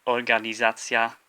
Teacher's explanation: this second to last syllable of the word is the one that you stress · The stress is on the second to last syllable, the za part, organizacja.